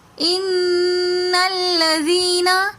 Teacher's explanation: ان نون مشدد ہے تو اس وجہ سے ہم نے یہاں پر ان پر غنہ کیا